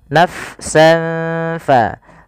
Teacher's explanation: huruf fa itu makhrajnya di bibir tapi tidak rapat bibir kita